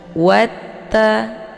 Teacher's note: wanya ditekan sedikit ya, langsung masuk ke ta, tidak perlu dibaca panjang. Karena ini merupakan alif ziyadah, jadi tidak ada fungsinya.